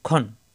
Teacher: খ জবর আসলে আকার প্রকাশ পায় না খ মোটা হরফ